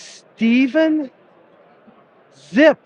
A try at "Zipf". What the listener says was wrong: The P is silent. Ziff, yeah.